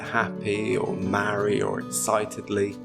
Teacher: this shortened /i:/ sound is frequently heard in words that end in y.